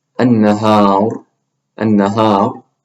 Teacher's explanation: So pretend these ra's have sukoon. This ra is preceded by an alif, so make the ra heavy. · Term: the ra is heavy